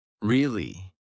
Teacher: Now say it with flat intonation. Your voice stays completely level.